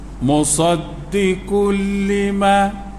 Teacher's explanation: bila bertemu huruf lam atau ra masuk dalam rumah lam atau ra tu asal musaddiqun jadi musaddiqul lima. Tu dimasuk lalu sebab tu tasydid atas lam. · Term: idgham